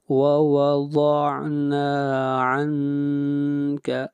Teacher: عن یہاں پر اخفا ہوگا، آواز ناک میں لے کر جائیں گے۔ نون ساکن کے بعد نہ حروف حلقی ہے، نہ حروف یرملون ہے اور نہ حرف اقلاب با ہے، اس لیے یہاں پر اخفا ہوگا۔